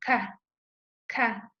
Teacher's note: Inténtenlo ustedes y van a sentir cómo sale ese aire. Por eso es eyectiva, porque eyectamos el aire al momento de hacer ese sonido que es K. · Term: velar eyectiva